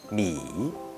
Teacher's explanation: from the high point to the low point, then to the high point again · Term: the third tone